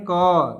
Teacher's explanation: क वर्ग का जो है कंठ से बोला जाता है